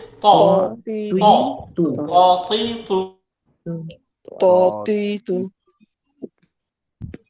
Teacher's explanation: জিহ্বার আগা উপরের দাঁতের গোড়ায় গিয়ে লাগবে